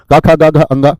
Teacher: इनका जो उच्चारण होता है वो कंठ से होता है, सभी का। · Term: कै वर्ग